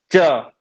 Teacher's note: तालू को जीव स्पर्श कर रहा है